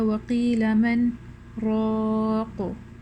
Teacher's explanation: The exception to the rule of idgham بغير غنة, which is for the lam and the ra, is the ayah وَقِيلَ مَنْ رَاقُ. In this ayah we have a sakta, and a sakta is a breathless pause that you take. So you will not join the noon sakinah with the ra, okay, because we have to take a pause here.